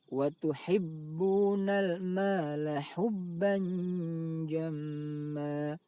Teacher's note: bunyi tanwin dibaca samar antara izhar dan idgham, lalu didengungkan. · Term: ikhfa